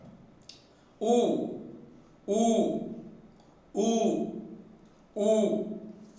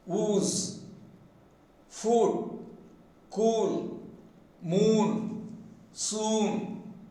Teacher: closely fully rounded, and the tongue is tense.